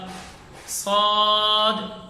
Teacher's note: اب صاد جب ہم ادا کر رہے ہیں تو اندازہ ہم لگائیں گے کہ صاد میں زبان کی جڑ اوپر تالو کی طرف اٹھ رہی ہے، جس کی وجہ سے یہ حرف موٹا ہو رہا ہے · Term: استعلاء